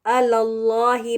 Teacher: देखि लाम के ऊ परर जबर है तो इसको अलला ही पहला वाला लाम जो है बारीक होगा अल्लाह के नाम में जो लाम है उसको मोटा पढ़ेंगे